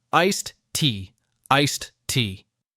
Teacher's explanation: the D in iced linking into tea